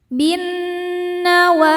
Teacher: Idgham syamsi bin nunnya ghunah musyaddadah karena ada nun bertasydid. Cara bacanya berdengung. Tahan dengungannya kurang lebih dua harakat. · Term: gunnah musyaddadah